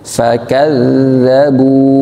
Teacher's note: tahan kazza, jangan terlalu sampai keluar udaranya, tapi dia tidak keluar udara, hanya keluar suara